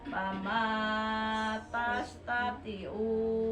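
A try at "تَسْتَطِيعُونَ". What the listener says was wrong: panjang tina tastati'una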